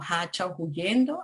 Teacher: Aspiración o glotalización de la H como hacha o huyendo